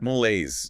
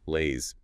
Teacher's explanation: Stress on the second syllable. Laise. 2 syllables.